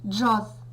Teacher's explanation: в цьому слові обидва приголосні дзвінкі